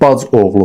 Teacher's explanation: Bacı oğlu yazılsa da bac oğlu formasında deyilməlidir.